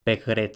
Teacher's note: la sonorización de la africada intervocálica por tanto pegre y luego la vocalización de la velar implosiva